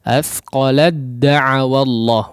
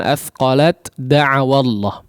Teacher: Nah, di sini masuk kepada huruf dal langsung ya, sama seperti fa'amanat ta'ifah tadi ya. Huruf ta-nya sudah tidak dianggap ya. Kenapa? Karena sudah masuk melebur secara sempurna kepada huruf dal. Athqalad ya, langsung masuk kepada huruf dalnya. · tidak dibaca sama sekali huruf ta-nya atau tidak dianggap ya, karena melebur secara sempurna masuk kepada huruf dal